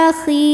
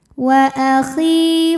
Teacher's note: sebab ada ya sukun yang sebelumnya berbaris kasrah maka huruf kha panjang dua harakat saja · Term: mad thabi'i dzahiri